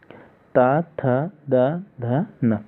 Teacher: इन सभी वर्णों का उच्चारण स्थान दंत से होता है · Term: दंत्य वर्ण